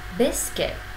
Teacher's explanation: Có hai âm tiết. Âm tiết đầu tiên nhận trọng âm, chúng ta nâng giọng lên. Và âm tiết thứ hai, chúng ta học đọc với giọng thấp hơn.